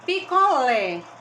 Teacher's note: picolé lê é a sílaba mais forte